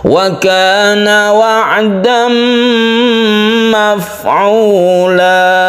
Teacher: Tanwin bertemu dengan mim idgham bigunah, kemudian di sini ada mat iwad, tanwin fathah yang dibaca 1 alif karena waqaf, maka dia dibaca fathah dan dipanjangkan, itu disebut mat iwad.